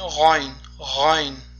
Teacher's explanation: Demak, g'oyn, g'oyn harfi avvalgi darslarimizda o'tgan xo harfiga ham juda mahraji juda ham yaqin. Demak, xo harfiga o'xshab talaffuz qilinadi, ya'ni tomog'imizning, xalqimizning eng yuqori qismida.